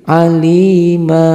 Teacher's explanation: Ialah 2 fathah dibaca 1 kalau dihentikan bacaannya, berhenti membacanya. Berapa panjangnya? Panjangnya 2 harokat atau 1 alif. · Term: mad iwad